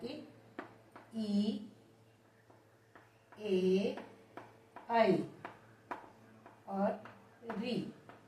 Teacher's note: इन्हें बोलते टाइम हमारी जीभ का आगे का भाग क्रियाशील रहता है, अग्रस्वर। फिर आता है मध्य स्वर।